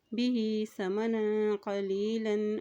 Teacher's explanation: ہا کے نیچے کھڑی زیر ہے، ایک حرکت لمبا ادا کریں گے